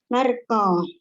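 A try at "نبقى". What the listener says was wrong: nabqa, enggak ada huruf ra, nabqa,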